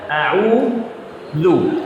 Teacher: Dzal makhrajnya, tempat keluar dzal, ujung lidah bertemu dengan ujung gigi seri atas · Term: huruf dzal